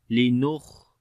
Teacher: وأنزلنا من المعصرات ماء سجاجا لنخرج به حبا ونباتا linukhrija. This kha we read in heavy sound, and also we make hums quality, the continuation of our breath.